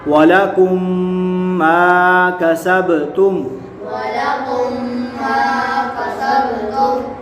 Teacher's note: میم ساکن کے بعد دوسری میم آ جائے تو ادغام شفوی ہوگا، یعنی گنہ کر کے پڑھیں گے